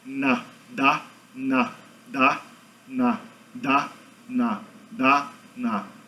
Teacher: o som do D e o som do N tem a mesma articulação na sua boca. A única coisa que muda é que tem o nasal ali em cima.